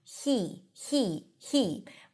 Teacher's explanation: The word he is pronounced with an h and a high e.